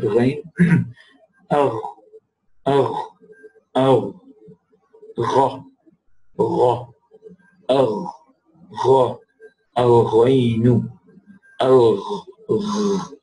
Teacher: you would notice that it does not close in pronouncing the ghain. Ghain, it's open, right?